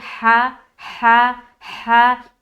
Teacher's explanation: ہا کا بھی مخرج وہی ہے جو عین کا ہے، وسط حلق یعنی حلق کا درمیانی حصہ